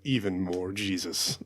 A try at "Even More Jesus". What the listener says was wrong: You didn't say it right. Emphasis on the Jesus.